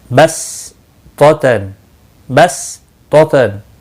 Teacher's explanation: सीन सफीरिया में से सिटी की आवाज़ होनी चाहिए।